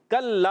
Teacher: کاف کا مخرج زبان کی جڑ اور تالو کا سخت حصہ